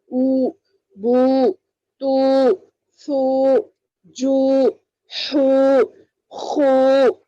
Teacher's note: معروف پڑھیں گے, معروف نرم آواز سے پڑھنا, مجھول اس کو لمبا کھینچ کر پڑھنا. پیش کی آواز آگے کو جاتی ہے اور ہونٹ گول ہوتے ہیں, جیسا واؤ کو گول ہوئے تھے نا ویسے ہی پیش کو بھی گول ہوتے ہیں.